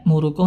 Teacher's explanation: hati-hati Hamzah Dia memiliki sifat syiddah ya langsung berhenti suaranya